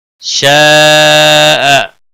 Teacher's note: شاء بڑی مد ہے، مد متصل 5 الف کے برابر کھینچ کر پڑھیں گے.